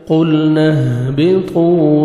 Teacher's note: قا کو موٹا کر کے پڑھنا ہے 1 سیکنڈ کھینچنا ہے. واو مد ہے.